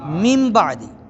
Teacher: اب جب نون ساکن نون تنوین کے بعد با آ جائے، با آئے تو نون ساکن نون تنوین کو میم سے بدل کر غنہ کے ساتھ پڑھیں گے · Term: قلب